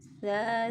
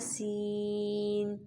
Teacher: ثا نرمی سے اور سین سیٹی والا